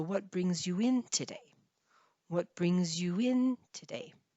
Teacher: we would generally stress the in. It's the second part of the two-word verb here.